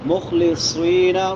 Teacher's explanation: صاد موٹے حروف میں سے بھی ہے اور سیٹی والے حروف میں سے